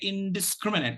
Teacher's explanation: in so the first syllable and the third syllables are stressed the third syllable takes the primary stress and the first syllable takes the secondary stress · the primary stress syllable is on scrim, and the secondary stress syllable is on in, the first syllable in. So the first syllable and the third syllables are stressed.